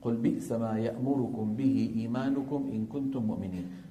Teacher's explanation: كل هذه الميمات والنونات المتحركات زمنها أنقص ما يكون